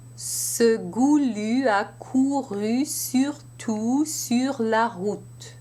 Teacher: my lips stay rounded and very closed, except for the two ahs in this sentence